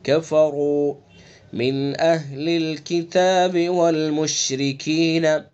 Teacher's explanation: کفروں میں را کو پر پڑھیں گے چونکہ پیش ہے، مشرکین کی را کو باریک پڑھیں گے چونکہ را کے نیچے زیر ہے.